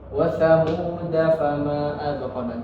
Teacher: tidak dibaca panjang walaupun ada alifnya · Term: sifr al-mustadir